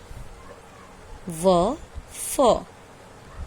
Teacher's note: दांत और ओठ दोनों की सहायता से हम व और फ का उच्चारण करते हैं। इसलिए इन वर्णों का नाम दिया गया दंतोष्ठ्य।